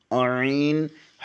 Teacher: عین حلق کے درمیانی حصے سے ادا ہوتا ہے